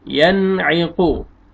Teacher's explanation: یہاں پہ دیکھیں نون ساکن کے بعد حروف حلقی میں سے عین آ رہا ہے، یہاں پہ آپ نے اظہار کرنا ہے